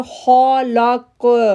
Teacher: کاف موٹا لیٹر ہے، دوسرا اس پر جزم ہو جانے کی وجہ سے وہاں پر ایکو ساؤنڈ بنے گا، تو ہم پڑھیں گے خلق۔